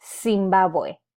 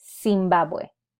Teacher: we do not have a Z sound in Spanish. We only have a S sound. So we would have to use it as a S sound.